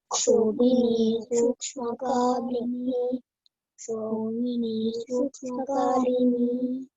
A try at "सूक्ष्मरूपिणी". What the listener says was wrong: I don't know from where you have picked up Kalini. It is Rupini, means Amma is a form of very Sukshma form. She is subtle.